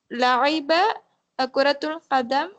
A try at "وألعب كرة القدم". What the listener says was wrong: وألعب كرة القدم في الملعب. وألعب همزة قطع.